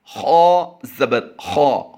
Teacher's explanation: ख़ा की अदायगी हम पुर कर रहे हैं क्योंकि ये हरूफ़ मुस्तालिया से है